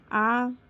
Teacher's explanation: आ की जीभ की स्थिति पश्च है, फिर उच्चारण स्थान कंठ है, फिर मात्रा दीर्घ है, फिर मुख विवर विवृत है